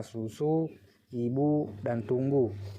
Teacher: Yang kelima yaitu fonem U, mempunyai dua macam realisasi, yaitu yang pertama dilafalkan sebagai bunyi U tinggi atas belakang bundar apabila berada pada silabel terbuka